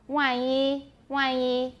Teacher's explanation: No, there's no n in there at all. You have a nasalized vowel.